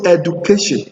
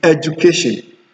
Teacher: So when you find U coming before after D, and the D is in poly or disyllables, the D is mostly pronounced as J